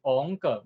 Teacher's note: 像讲王，王就是第五调，伊无变调哦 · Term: 本调